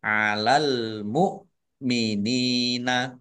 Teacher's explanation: Alif lam komariah al mukminina ditandai lamnya dibaca sukun. Kemudian hamzah mukminina dibaca ringan hamzahnya. Nun kasroh ya sukun mat tabi'i.